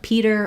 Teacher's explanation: if I'm saying a word like um a name like Peter or a word like paper my P sound will have a burst of air